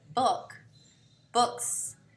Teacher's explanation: the S is still unvoiced because the k is unvoiced